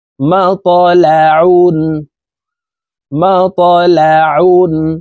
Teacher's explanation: দুই পেশ উন তানউইন ওয়ালা হরফকে নুন যুক্ত ভাবে তাড়াতাড়ি করিয়া পড়তে হবে ঠোঁট গোল করে নুন যুক্ত ভাবে এই দুই পেশের উচ্চারণ করব